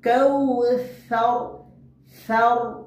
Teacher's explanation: জিহ্বার আগাকে সামনের উপর দুই দাঁতের আগার সঙ্গে লাগে উচ্চারণ করব। কাউসার সার।